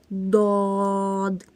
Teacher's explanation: ضاد، زبان کی کروٹ اور اوپر کی 5 داڑھوں سے ادا ہوتا ہے۔